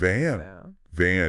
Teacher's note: you're adding that vibration from your vocal cords